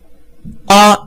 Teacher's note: 告诉你啊是舌面元音，它的舌位前后呢是在中央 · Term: 央低不圆唇元音